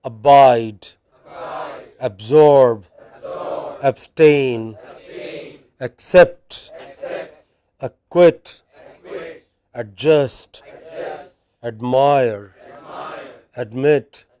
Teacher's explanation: some verbs with main stress on the final syllable